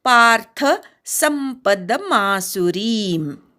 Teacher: शेवटचा री दीर्घ आहे आणि म अर्धा आहे. संपदमासुरीम इथे संपदमध्ये मला प जोडलेला आहे, तो अनुस्वाराचा म झालाय पुढे प आल्यामुळे.